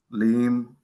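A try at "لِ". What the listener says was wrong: No, not leem, but just li.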